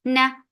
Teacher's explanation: for fatha open jaws, the sound is short